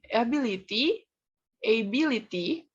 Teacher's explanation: To the ability, ability, which emphasizes the second syllable